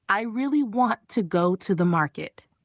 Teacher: Here want, go and market are stressed. Words like I, to, and the are soft. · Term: stress words and weak words